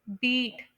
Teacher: इसके अंदर ज्यादा स्ट्रेस भी आ रहा है और लंगर ड्यूरेशन भी है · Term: लॉन्ग वल